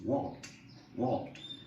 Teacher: you're better off not using any second syllable in a word like this